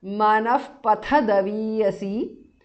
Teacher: Manaf pathadaviyasi is a compound word. Manaha, the visarga changes to upadhamaniya